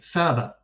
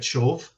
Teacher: The initial th sound, which in Hebrew should become sh, and which it does, you get shov, and in Aramaic should become ta, which you get tav, but in Arabic just remains.